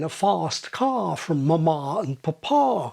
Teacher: Advanced RP speakers may have an especially far back palm vowel